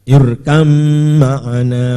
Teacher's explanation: Idgham mutajanisen atau idgham jinsi karena mem dan ba satu dalam makhrajnya.